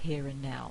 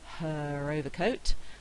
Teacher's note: if the word is followed by a word beginning with a vowel which is what we've got here then I'm likely to say the R sound · R in the spelling at the end of a word and the next word begins with a vowel I'm going to produce the R or I can produce the R remember these are optional processes · I'm likely to say the R sound here and now and it's a kind of linking thing